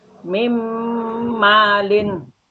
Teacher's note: Cara membacanya dengung tiga harokat.